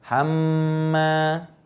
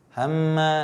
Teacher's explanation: Nah, ini adalah guna. Karena apa? Mimnya bertasydid gitu. Hamma. Kemudian dia mad tabi'i.